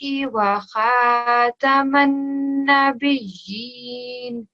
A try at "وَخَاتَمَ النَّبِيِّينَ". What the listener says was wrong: Just over here, the kha needs to be a little bit thicker. Wa khataman nabiyyin. So if you just read that portion there. Wa khataman nabiyyin.